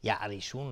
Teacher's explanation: را ترقیق است چون کسره داره